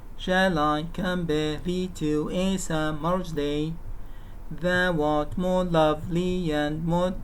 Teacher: The first is accented, the unacented, sorry, and the second is accented. The first is unstressed, the second is stressed, and so on. Weak strong weak strong weak strong